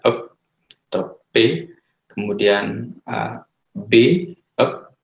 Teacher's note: itu ada pertemuan antara bibir bawah dengan bibir atas ya, itu kelompok bunyi bilabial